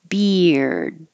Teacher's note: happens beer and if you put a d on it beard they're going to hold the D and not hear it